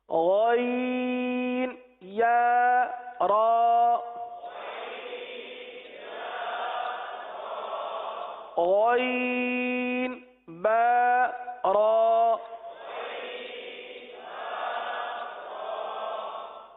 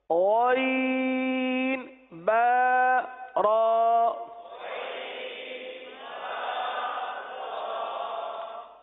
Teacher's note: غین حلق کے اوپر والے حصے سے ادا ہوتا ہے. جو منہ سے قریب ہے وہاں سے ادا ہوتا ہے.